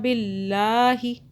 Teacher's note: अल्लाह बारीक हो रहा है क्योंकि अल्लाह से पहले ज़ेर आ रहा है